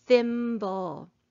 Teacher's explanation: here in the word thimble, digraph TH is making its unvoiced sound